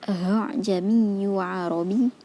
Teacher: Hamzah pertama pada kata a'jamiyyu atau itu dibaca dengan jelas, sedangkan hamzah kedua sedikit samar atau tashhil.